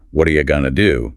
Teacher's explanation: The underlying stress pattern holds the whole utterance together in what are you gonna do? The stress still falls on what and do, or perhaps on gonna.